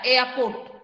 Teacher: एयरपोर्ट पर रॉ sound नहीं आएगा